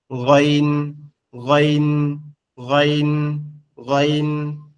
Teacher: গন অক্ষরটা আমাদের কন্ঠনালীর শেষ ভাগ · মনে হবে কি আওয়াজটা গলার মধ্যে থেকে আসতেছে